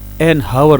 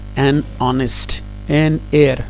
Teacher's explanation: اب کچھ ایسے الفاظ ہیں جن کے شروع میں ایچ آ رہا ہے، وہ ایچ سائلنٹ ہے، تو اس صورت میں ہم اس لفظ سے پہلے این لگائیں گے.